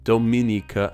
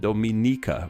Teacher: However, one source I read told me that while these names look the same, they're actually pronounced differently. With Dominicans from the Dominican Republic, the me syllable is stressed, while Dominicans from Dominica, the ni syllable is stressed, Dominica and Dominica respectively.